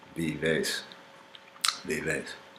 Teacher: So V, with teeth touching.